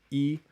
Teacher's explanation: High close like high front unrounded